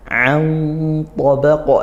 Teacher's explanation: An tabaqa nun sukun bertemu ta ini ikhfa haqiqi dibaca samar dan dengung.